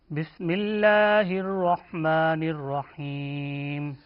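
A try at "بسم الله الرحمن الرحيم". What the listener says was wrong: بسم اللہ بس سین صاد ز، ان تین حروف کو پڑھتے وقت سیٹی کی آواز آنی چاہیے، اسی لیے ان کو حروف صفیریہ کہا گیا. بس یہ درست نہیں ہے.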